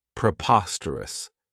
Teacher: The next word, and it's one that I really like, is preposterous. This adjective has 4 syllables, and the stress is on that second syllable